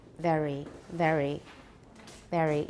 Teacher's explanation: for British English, it tends to be pronounced with the tip of the tongue close to the alveolar ridge